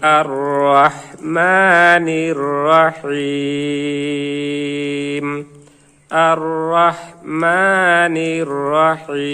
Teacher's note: এখানেও যেহেতু ওয়াকফের কায়দা, জেরের বাম পাশে জজম আলাইয়া মাদের হরফ, এর বামের হরফে ওয়াকফ হয়েছে, তাই এখানেও মাদ্দে আরজি 3 আলিফ টানিয়ে ওয়াকফ করিতে হবে